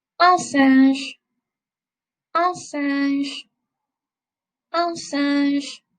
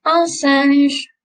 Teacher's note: this middle part of the word is really nasal. Okay, so really use your nose for this part.